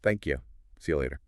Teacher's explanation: ya for you. Ubiquitous, especially when you is unstressed in the middle or end of a sentence